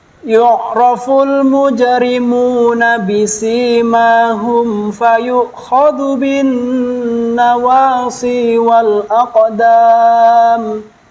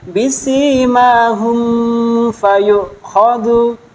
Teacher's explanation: Jadi cara membacanya di idhar syafawi itu tidak boleh didengungkan. Sekali lagi, idhar syafawi tidak boleh didengungkan.